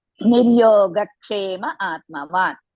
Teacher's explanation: In between Niryoga and Kshema, add one small Ka. That means Ka to be taken immediately after Gha.